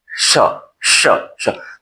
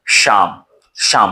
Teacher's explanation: तो श कहते हैं तो जीवा हमारी जो है वह तालु में से टच करके तब निकलता है श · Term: तालव्य श